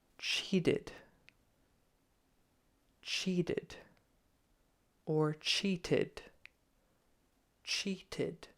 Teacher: you may hear the T or a softer like a d